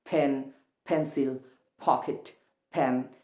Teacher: ইংলিশের যে consonant letter পি শব্দের শুরুতে থাকলে সেটাকে আসলে মহাপ্রাণ ধ্বনিতেই উচ্চারণ করতে হয়।